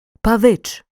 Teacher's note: неправильне наголошування слова адже наголос має впасти на другий склад